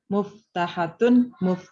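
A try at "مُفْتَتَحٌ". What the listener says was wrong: Muftahatun atau muftatahun? Muftatahun. Kebalik Bu hurufnya. Kebalik. Muftatahun.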